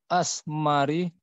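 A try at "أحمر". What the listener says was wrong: ahmari. Kalau asmar? Ya, asmar warna apa kalau asmar? Pakai sin. Asmar.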